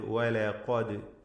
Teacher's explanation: ഇതിൽ ഖാഫിനെ തഫ്ഖീം ചെയ്യണം എന്നത് ശ്രദ്ധേയമാണ്. വലഖദ് ഖാഫിന് മാത്രമാണ് തഫ്ഖീം, മറ്റ് ഹർഫുകൾക്ക് തഫ്ഖീം വരരുത്. അപ്രകാരം തഫ്ഖീം ചെയ്ത് ഉച്ചരിക്കേണ്ട അക്ഷരമാണ്.